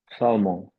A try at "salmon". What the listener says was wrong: Okay, so the L is for English people, the L is silent. For I'd say for 90% of people. So try again without the L sound. So I would say you're doing this in a French accent.